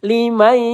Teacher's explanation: nun sukun bertemu ya. Ini idgham bighunah. Kita tahan dua atau tiga harakat.